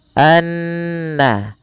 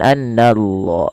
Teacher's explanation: Kemudian pelafal annallaha ada bacaan ghunah yang di mana ghunahnya adalah dimasukkan ke rongga hidung kita suaranya anna ya dan dia ditahan sepanjang dua harakat. Hati-hati jangan menebalkan huruf na karena na sifat pada dasarnya sifatnya tipis